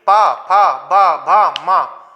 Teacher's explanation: क्या है, ओष्ठ, अर्थात जिनके उच्चारण में दोनों होठ आपस में मिले वही क्या है, ओष्ठ से उच्चारित वर्ण है। · जब तक आप अपने होठों को नहीं मिलाएंगे, इन दोनों अवयवों का मेल नहीं होगा, तब तक आप इस वर्ग को उच्चारित नहीं कर सकते।